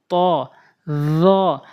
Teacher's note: জিহ্বার আগা সামনের দুই দাঁতের আগাতে লাগাবেন